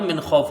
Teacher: جب وقف کیا گیا تو یہاں پر من خوف ہو گیا، فا یہاں پر ساکن ہو گیا. میم کو نون سے ملائیں گے، نون ساکن کے بعد حروف حلقی کا خا ہے تو یہاں پر اظہار حلقی ہوگا، یعنی نون کو ظاہر کر کے بغیر غنہ کے جلدی پڑھا جائے گا.